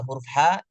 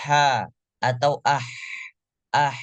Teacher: angin yang keluar ketika membaca huruf ha itu paling deres di antara huruf lainnya